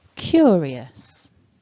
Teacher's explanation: the first syllable is stressed in this word. So the strongest part of the word is cure. And then we've got two dots which tell us that in total, as you can see, hopefully, there are 3 syllables in this word, 3 chunks of sounds.